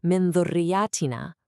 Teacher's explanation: Instead of a hard un or in sound, you create this light nasal hum that basically prepares you for the very next letter. Yeah, instead of a hard stop, it's a really smooth transition. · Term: ikhfa